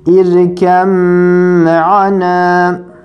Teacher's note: B'den sonra mim geldiği zaman bir cezimli, diğer harekeli. Yine birbirine katarak birincisini okumuyoruz, ikincisini okuyoruz. İdgam mütecanisinin kuralını uyguluyoruz. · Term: idgam mütecanisein